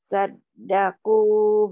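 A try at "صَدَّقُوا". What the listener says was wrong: Kenapa sadaku? Kalau sadaku ada tasdid. Sodaku bukan sadaku. Sodaku ma'ahadu.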